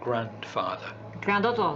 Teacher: she's not moving her teeth to her lip for the F sound grandfather that doesn't happen it turns it stays inside the mouth